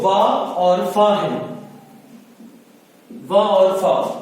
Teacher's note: वा और फा, ये वर्ण हमारे दंत और ओष्ठ, इनके द्वारा उच्चारित किए जाते हैं। ये दंत और ओष्ठ के सहयोग से उच्चारित किए जाते हैं।